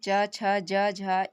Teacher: ये कहाँ से तालु से बोले जाते हैं, इसलिए इन्हें तालव्य वर्ण कहते हैं